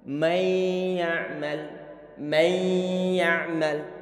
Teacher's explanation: Sehingga idgham disertai dengan dengungan yang muncul di hidung. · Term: idgham bi gunnah